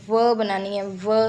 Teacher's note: उसके बाद अगर आप अपर टीथ को दे लें तो अगर देखें व साउंड, व बनानी है व, तो अपर टीथ, वो अपर टीथ है हमारे व, और लोअर लिप को मिलाने से व की साउंड बनेगी।